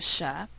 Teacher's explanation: what is the place of articulation of a sha well it's an alveopalatal just like the Y so the alop palatal nature of the Y influences the choice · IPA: [ʃ]